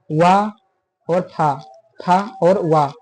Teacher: ये उच्चारण करते समय जो नीचे का ओष्ठ है ये ऊपर दांतों को स्पर्श करता है। जो आपका ओंठ है ये दांतों को स्पर्श करता है, अतः ये दंतोष्ठ व्यंजन है कहा जाता है।